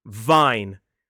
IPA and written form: vaɪn (vine)